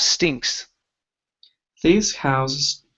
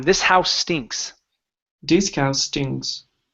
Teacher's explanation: let's let's see here so when you have two two words one that ends with an s the next one starts with it combine the S sounds